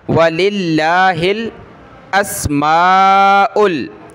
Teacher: वाव ज़बर वा लाम, लफ्ज़ अल्लाह से पहले लाम पर ज़ेर है तो लफ्ज़ अल्लाह को बारीक पढ़ेंगे। वलिल्लाह, हा को लाम के साथ मिलाएंगे, हा लाम ज़ेर हिल।